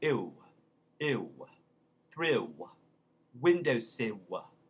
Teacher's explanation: words that end in a double L, pill, thrill, ill, windowsill, what they do is it becomes sort of like a W, but it's sort of a puckered W. So ill becomes ew, ew, thrill, windowsill.